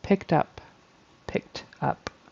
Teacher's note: so just watch out for those one syllable past tense verbs the Ed turns into either a t or a D in this case a t